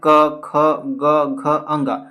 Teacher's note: कंठे ध्वनियां कहने का मतलब ऐसी ध्वनियां जिसका उच्चारण कंठ से होता है।